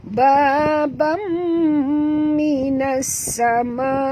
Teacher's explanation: Okay, ba dua harakat, bam dengung, ya. Masukkan bunyi ba tanwin ini ke dalam mim disertai dengung dua harakat